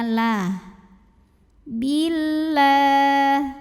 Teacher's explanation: Lam pada lafaz Allah dibunyikan secara tarqiq sebab baris sebelumnya kasrah, maka bacanya tipis.